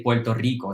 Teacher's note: the first one we say as an l the second one has a normal r